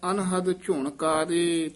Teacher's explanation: ਝੁਣਕਾਰੇ ਕਕੇ ਨਾਲ ਹੀ ਉਚਾਰਨ ਕਰਨਾ ਝੁਣ ਘਾਰੇ ਘਾ ਨਹੀਂ ਲਾ ਦੇਣਾ